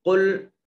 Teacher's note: قاف حروف مستعلیہ میں سے ہے، اس کو بھی موٹا اور پر کر کے پڑھیں گے